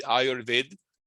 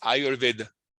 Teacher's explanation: at the end it's not actually dropped so it's not actually ayurved it's ayurveda